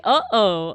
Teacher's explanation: Uh-oh has a glottal stop in it.